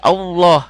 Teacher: lafaz Allah itu tafhim tebal jadi Allahnya jadi Allah